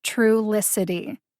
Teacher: true licity has four syllables see if you can hear them true licity the emphasis is on the first syllable true · The emphasis is on the first syllable, true, like the word truly.